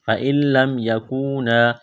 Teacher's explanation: نون ساکن کے بعد لام ہے، لام کے اوپر تشدید ہے تو نون کا لام میں ادغام کریں گے بغیر غننے کے · واو ساکن سے پہلے پیش ہے، حروف مدہ واو ہے، ایک الف کے برابر کھینچنا ہے